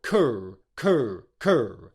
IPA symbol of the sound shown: kʊr